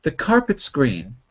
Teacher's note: car and green are the stressed syllables